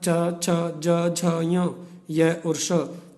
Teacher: च, छ, ज, झ, य और श, इनका उच्चारण स्थान होता है तालु